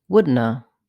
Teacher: some speakers reduce wouldn't of even further to woodna